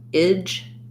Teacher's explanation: similar to the word edge, but no length here, and switch it to an I vowel